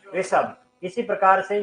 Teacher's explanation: स से पहले ई या उ की ध्वनि है तो स का मूर्धन्यकरण होता है और स बदल जाता है श में।